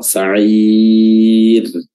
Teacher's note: Dan juga di akhirannya ada huruf ra yang tarqiq, yang kita baca tipis karena sukun yang sebelumnya ada kasrah. Sa'ir, ra-nya tipis.